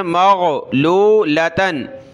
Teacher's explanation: غین نکالیں گلے سے